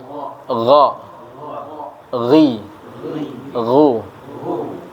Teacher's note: huruf gha itu namanya adnal halqi. Keluarnya di adnal halqi.